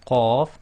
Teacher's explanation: when you say the qaf, you block the throat and release the sound, so qaf. But when you're using it in sarking, it's the opposite.